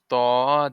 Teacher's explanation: জিহ্বার আগা হতে মোটা ভাবে আদায় হবে